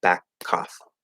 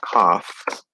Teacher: the first K is sort of still attached to the word back, and we stop it or hold it, and it creates this little pause